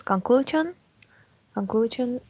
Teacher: it has three syllables and the stress in the second one